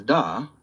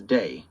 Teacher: These groups are frequently linked to the th stopping phenomenon where 'the' becomes da or these becomes day because those speakers were more comfortable with hard dental stops than the soft th sound.